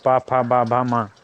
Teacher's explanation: इन व्यंजनों को उच्चारण के समय दोनों ओष्ठ स्पर्श करते हैं, जीह्वा निष्क्रिय रहती है। जैसे पा फा बा भा मा ओष्ठ व्यंजन होते हैं 5, इसमें 5 आते हैं, 5 शब्द हैं।